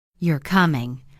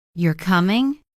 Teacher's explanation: rising tone, it becomes a question, I'm not sure, I'm asking. Same words, completely different meaning just from tone. · If I say, You're coming, falling tone. That sounds like a statement, I'm sure you're coming. But if I say, You're coming, rising tone, it becomes a question